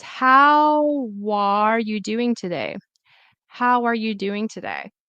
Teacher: Because the W, the consonant sound, will go into where the vowel starts.